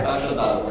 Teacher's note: você faz uma junção das sílabas vogais átonas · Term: elisão